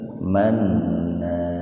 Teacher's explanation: Manna gunnah, kemudian matobi alif. Jadi agak dibaca panjang.